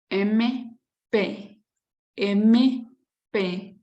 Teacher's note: bilabial MP, MP, donde se toca labio con labio.